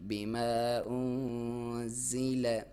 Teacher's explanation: زا کو سیٹی کے ساتھ باریک